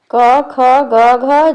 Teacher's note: घ का उच्चारण स्थान कंठ है · क ख ग घ जैसे वर्णों का उच्चारण कंठ से होता है इसलिए इन्हें कंठ वर्ण भी कहते हैं